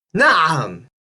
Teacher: It's kind of hard to describe, but it's basically a bit like a glottal stop, but much smoother and much less static.